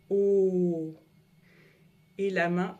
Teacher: le O la bouche est toute ronde.